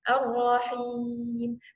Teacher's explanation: kalau Ar-Rahim, karena kita mau berhenti, dia boleh 2, 4, atau 6 harokat. Ar-Rahim. Tapi kalau mau lanjut ya Ibu, itu harus 2 harokat.